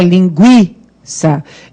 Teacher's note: esse U tem som e o I que é forte, né? Linguiça.